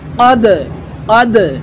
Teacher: দাল কলকলার হরফ দাল হরফে আমরা ধাক্কা দিতে হবে বাউন্স করতে হবে